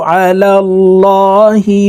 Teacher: এই লামকে ল অর্থাৎ মোটা করে পড়তে হবে